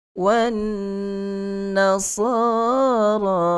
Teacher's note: Wajibul gunnah, nun syaddah. Nun yang bertanda syabdah, maka dengung di situ adalah dengung yang paling sempurna. Sifat gunnah pada nun syaddah dan mim yang bertanda syaddah, penyempurnaan gunnah yang paling sempurna.